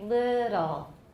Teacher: i have central release my british teacher has lateral release